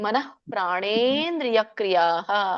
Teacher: ಅಲ್ಲಿ ವಿಸರ್ಗ ಇದೆಯಲ್ಲ, ಮನಂ ಅಲ್ಲ, ಮನಃ. ಎರಡು 0 ಬಂದ್ರೆ ಅದು ವಿಸರ್ಗ, 1 0 ಬಂದ್ರೆ ಅದು ಅನುಸ್ವಾರ.